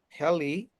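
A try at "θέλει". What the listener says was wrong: Feli, Feli, the TH. Feli, the TH, like the tongue has to come a little bit out, like the thanks in English, but stronger.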